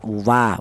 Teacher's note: Akan tetapi dibedakan ya, walaupun sama berasal dari kedua bibir, akan tetapi dibedakan untuk huruf wawu ini, yaitu dihasilkan dari kedua bibir yang renggang. Kita bilang wa itu melibatkan kedua bibir, baik bibir atas atau bibir bawah berperan, akan tetapi dia renggang alias tidak nempel ya, atau tidak rapat.